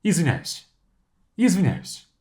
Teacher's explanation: So я is not even enunciated.